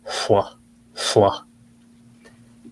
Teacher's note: it's like the L sound, L, but it's voiceless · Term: belted L